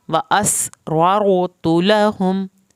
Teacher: سین کو سیٹی کے آواز کے ساتھ پڑھیں گے